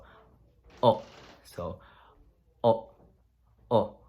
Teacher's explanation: What you do to stop pronouncing the word, instead of stopping pronouncing it with your lips, you stop it from the back of your throat. So just right here, you have the muscles in the back of your throat.